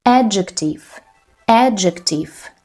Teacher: The first is stressed and we have 3 syllables.